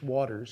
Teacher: Stress in English, waters, goes on the first syllable